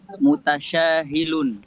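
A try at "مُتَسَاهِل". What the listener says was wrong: Mutasahil ya, pakai sin.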